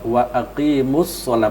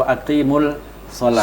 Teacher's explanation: Tasdid mat tabi'i, huruf lamnya itu lam syamsiyah ya, bertemu dengan huruf shad, maka disebut wa aqimus sholata atau wa aqimus sholah. Tidak disebut wa aqimul sholah karena ada alif lam, tidak, tetapi karena ada huruf shad setelahnya itu syamsiyah dengan harus dihilang dan yang enggak kelihatan betul.